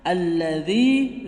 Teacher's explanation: Mad Thobi'i dua ketukan jangan sampai membaca alladzi kepanjangan